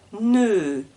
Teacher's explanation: la langue reste devant la bouche elle ne touche pas les dents elle est derrière donc au début je suis devant ne et la langue recule